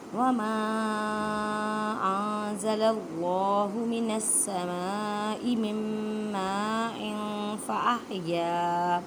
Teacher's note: اللہ کے لفظ کو موٹا پڑھیں